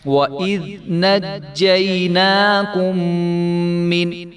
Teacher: ذال کو جو ہے وہ نرمی کے ساتھ ادا کریں گے، اس کو وَإِذْ نہیں ہونے دیں گے، وگرنہ یہاں ذال کی جگہ زا آ جائے گا